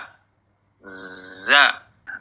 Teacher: suaranya yang keluar, tapi nafasnya yang ditahan, sehingga terdengar bunyi z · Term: al-jahr